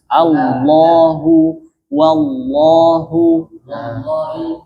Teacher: lam itu tebal ketika lafaz lam jalalah. Lainnya tipis.